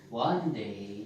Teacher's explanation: Okay, the day is unstressed. We call that unstressed.